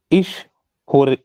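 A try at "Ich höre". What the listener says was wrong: So you said horror, it's not horror. How do you pronounce O umlaut? I'll teach you right now. Just make, you know, say A, like, you know, A of day. Now try to make a circle with your lips.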